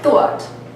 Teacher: what's happening with the New York City thought vowel is that it stays back, but it moves up. Instead of thought, you get thought.